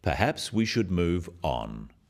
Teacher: it is said in a firm way with a falling intonation at the end practice with me perhaps we should move on this falling intonation · The first one, perhaps we should move on, is phrased as a suggestion, but it is said in a firm way with a falling intonation at the end.